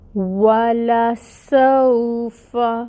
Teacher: واو ساکن سے پہلے فتحہ کی حرکت ہے سین کے اوپر، تو یہاں پہ لین ہو رہا ہے، نرمی سے ادا کریں گے۔ · واو پہ فتحہ کی حرکت ہے، 1 کاؤنٹ پڑھیں گے۔ لپس کو اچھے سے راؤنڈ کر کے واو کی ادائیگی کریں گے